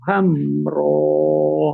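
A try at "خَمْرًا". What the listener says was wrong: Jangan hamro, khomro. Nah, jadi kalau hamro itu ha, ini kan kho.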